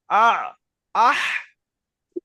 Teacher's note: এই গলার মাঝখান থেকে উচ্চারণ হয় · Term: আইন হার মাখরাজ